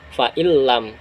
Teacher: Nunnya itu tidak kita baca lagi, jadinya fa'il lam. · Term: idgham bila gunah